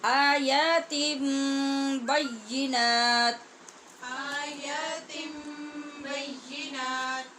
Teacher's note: جب نون تنوین کے بعد با ہے تو ہم نے یہاں نون کی آواز نہیں نکالنی، ہونٹ بند کرنے اور سختی سے ادا کرنا ہے۔ · تا کے بعد غنہ نون میں نہیں ہوگا بلکہ میم میں ہوگا